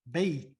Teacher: if we are reading this correctly we would say bait without pronouncing the tanween